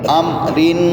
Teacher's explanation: آواز کو ناک میں تھوڑا سا چھپا کے لمبا کرنا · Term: غنہ